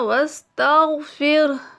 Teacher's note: غین کو موٹا پڑھتے ہوئے کیونکہ یہ حروف مستعلیہ میں سے ہے۔